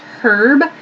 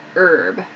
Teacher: In American English, we say herb. This H sound we do not pronounce